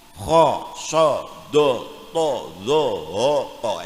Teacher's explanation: khosodo todo hoko itu kalau fathah, fathahnya jadi o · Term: tafkhim